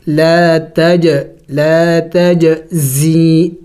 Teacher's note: زا سیٹی والے حروف میں سے ہے، سیٹی والے حروف کل 3 ہیں، زا، سین، صاد، یعنی ان کو پڑھتے وقت منہ سے سیٹی کی آواز نکلنی چاہیے